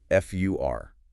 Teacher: It loses its O sound and shifts to the schwah, >> making it sound like >> fur, like the animal fur. · when it's unstressed, which is most of the time, the vowel sound changes completely. It loses its O sound and shifts to the schwah